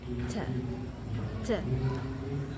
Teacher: termasuk ke dalam voiceless atau tidak bergetar. Dan alveolar dan bunyi letupan.